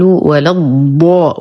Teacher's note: انتبه لحرف الضاد بالكلمة الأخيرة من سورة الفاتحة، أقول ولا الضاء وليس ولا الضاء. الضاد تخرج من حواف اللسان وليس من طرفه، لساني للأعلى وليس للأمام. أمد الألف مد لازم كلمي مثقل 6 حركات.